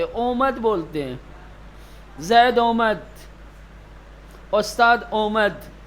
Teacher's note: جبکہ فارسی زبان میں اسی آمد کو بغیر کھینچے ہوئے بولا جاتا ہے، بلکہ آمد بھی نہیں کہتے، اومد بولتے ہیں۔ زید اومد، استاد اومد، نہیں کہیں گے آمد، آمد بھی نہیں بولتے، بلکہ جیسے لگے گا پیش دے دیا ہو۔